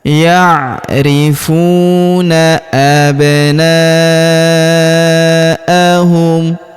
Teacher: huruf na kita panjangkan empat atau lima harakat karena di depan huruf na terdapat alif yang di atasnya terdapat tanda garis bacaan panjang empat atau lima harakat yang ini yauna abnaahum.